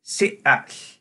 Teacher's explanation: there was a glottal stop in the middle of the name of Chief Seattle